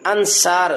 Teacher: صاد کو موٹا کیا، موٹا اگر نہ کیا تو پھر یہ سین پڑھیں گے، انصار، سار نہیں پڑھنا، انصار، صاد کو لمبا بھی کیا کیونکہ الف مدہ آ گیا، اور آگے وقف آ گیا ہے تو وقف کی وجہ سے یہاں مد عارض وقفی، اس کو اور لمبا کیا جا سکتا ہے، من انصار، تو اس کو یاد رکھنا ہے۔